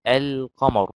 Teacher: اللام القمرية يعني بتظهر، زي ما تقول كلمة القمر، اللام تظهر